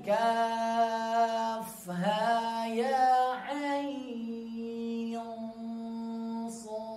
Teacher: Sodnya 6 harokat dan qalqalah di akhirnya.